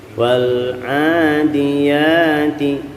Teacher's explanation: Kita bertemu dengan lam sukun. Kita letakkan lidah kita di makhraj lam, ujung lidah tempel ke gusi atas depan atau di langit-langit paling depan agar tidak memantul.